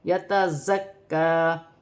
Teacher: زا سیٹی والی ہے، جماؤ کے ساتھ ادا کیا جائے گا. زکا کاف مشدد ہے، اسے بھی جماؤ سختی کے ساتھ ادا کیا جائے گا اور ایک الف کی مقدار کھینچ کر بھی پڑھا جائے گا.